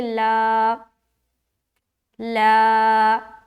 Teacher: लाम को बारीक पढ़ेंगे तो अलीफ भी उसके साथ साथ बारीक ही रहेगा। तो हम यहाँ पर पढ़ेंगे ला, ला, बस इतना ही खींचना है, इससे ज़्यादा नहीं खींचना। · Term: अलिफ मद्दा